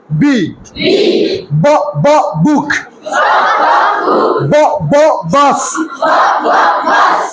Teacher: দুই ঠোট বন্ধ করে শক্ত করে উচ্চারণ